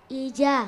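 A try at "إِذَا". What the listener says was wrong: Za. Za ini digigit za. Za. Itu yang satu za, yang satu ja. Tidak sama. Yang pertama za, kan?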